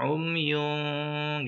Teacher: Umyun ikhfa, posisi bibir kita, lidah kita siap-siap ngucapin huruf fa.